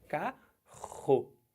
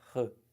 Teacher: O RR são dois sons? Não, você fala como carro. Sai pela garganta, mas é um som só.